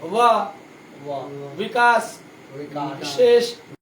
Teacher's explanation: ये देख लीजिए, जब हम वो बोलते हैं ना, वो बा नहीं, वो यार वाला ऊपर का दांत को नीचा वाला जो ठोर है उस पे थोड़ा सटाइए, मतलब स्पर्श होने दीजिए। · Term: दंतोष्ठम